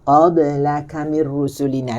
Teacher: Qalqalah lembutkan sebutan qalqalah, jangan qab. Kita tak nak bunyi qab. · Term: qalqalah sughra